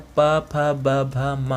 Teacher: दोनों होंठ आपस में टकराएं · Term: पवर्ग